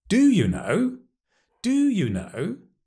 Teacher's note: Emphasizing the do, strong form.